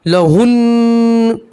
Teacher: نون کے اوپر جزم پڑھیں گے مگر نون میں گننا بھی کریں گے